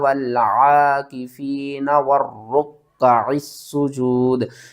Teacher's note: واو کو را کے ساتھ ملانا ہے، درمیان میں الف اور لام کو چھوڑ دینا ہے، پھر اس را کو کاف کے ساتھ ملانا ہے، کاف کے ساتھ جو زبر ہے پھر اس کو پڑھنا ہے، پھر اس عین کو ہم نے سین کے ساتھ ملانا ہے، سین کو ہم نے سیٹی کے ساتھ پڑھنا ہے، 2 بار پڑھنا ہے اور سختی کے ساتھ پڑھنا ہے